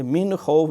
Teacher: یہاں اظہار ہے کیونکہ حروف حلقی میں سے خا آ گیا ہے